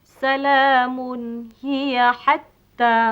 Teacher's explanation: Hendaklah dibaca dengan nyata tanpa didengungkan. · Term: izhar halqi